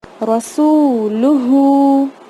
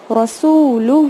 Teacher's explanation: سین کو کھینچا، پھر لام کو نہیں کھینچا، پھر ہا کو واپس کھینچا. کیوں؟ کیونکہ سین کے ساتھ لانگ واول واو ساکن ہے.